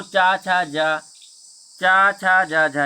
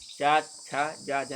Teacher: चा, छा, जा, झा ये ताल की सहायता से बोले जाते हैं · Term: तालव्य व्यंजन